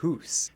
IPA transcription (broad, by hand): foːt